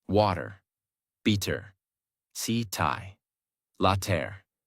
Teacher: In these words, the mouth does not stop strongly on the T. The tongue touches quickly and moves on. That is why it sounds softer.